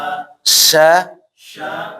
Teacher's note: anginnya atau udara itu lebih banyak mengalir ya ketimbang sin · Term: syin